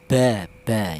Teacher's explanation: Ba itu dihasilkan dari kedua bibir tapi dia dua bibir yang rapat dulu.